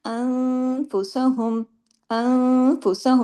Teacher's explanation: नून साकिन के बाद फ हुआ तो इफा हुआ और गुना